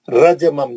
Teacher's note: जीम पे खलखले सगरा